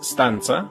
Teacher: there's no puff of air on that t, so it's stanza and not stanza.